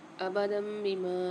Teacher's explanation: یہاں پر ابدم بما، یہاں پر قاعدہ ہو رہا ہے اقلاب کا، دو زبر کی تنوین کے بعد چھوٹی سی میم آ رہی ہے، اس کو میم سے ملا کر غنہ کر کے پڑھیں گے